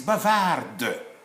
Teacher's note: when it is masculine, it is silent D. If it becomes feminine, now it becomes audible.